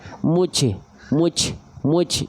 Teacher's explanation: terpercikan nafas yang seharusnya tertahan